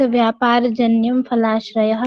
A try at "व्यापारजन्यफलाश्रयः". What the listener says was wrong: व्यापार जन्यम बोला ना आपने, ये ठीक नहीं किया। व्यापार जन्य फलाश्रय। ये थोड़ा सा सुधारना है और कोई समस्या नहीं है।